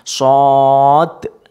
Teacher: Kalau shad itu kan kalau ditulis ada shad, alif dan dal. Dalnya itu bersukun, berarti qalqalah